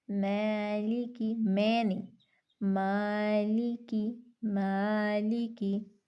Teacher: اسی طرح باریک الف کی مثال ہے، یہاں پہ الف ہے اور الف اپنے ما قبل کے تابع ہوتا ہے، اور یہاں پہ ما قبل حرف باریک ہے تو ہم الف کو باریک پڑھیں گے، جیسے مالکی۔ اب الف مرققہ کو اتنا باریک نہیں پڑھنا کہ جھکاؤ پیدا ہو جائے، امالہ پیدا ہو جائے